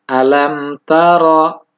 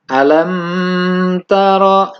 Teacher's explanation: Kecuali tadi yang mendengung atau dihukumi ikhfa syafawi dan juga idgham mutamatsilain, maka selainnya harus jelas izhar syafawi, dibacanya tidak menggunakan dengung. Artinya, jangan terlalu lama ditahan di mim tersebut. Tapi langsung setelah kalimat mim, dibaca dengan huruf berikutnya.